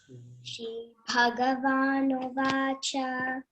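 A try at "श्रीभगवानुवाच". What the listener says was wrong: Again, cha you should not elongate. Okay, it's a short vowel. Shri Bhagavanuvacha.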